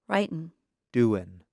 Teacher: In careful speech, Americans pronounce the G at the end of the verb. However, in fast speech, many Americans do not pronounce the G at the end of the verb.